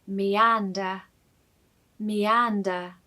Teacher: AN in this word is said very loudly.